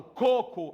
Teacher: quando eu falo coco aí mais forte é o primeiro co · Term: sílaba mais forte